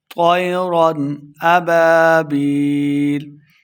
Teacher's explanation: رن بغیر غنہ کے پڑھیں گے، اظہار ہو رہا ہے